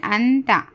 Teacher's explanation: حمزہ، نون زبر، ان، تے زبر تا، لیکن انتا، نون کی آواز کو ہم چھپانا ہے، کیونکہ نون ساکن کے بعد تا آیا ہے، تو ہم نون کو ظاہر کر کے نہیں پڑھنا، چھپانا ہے نون کی آواز کو۔ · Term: اخوا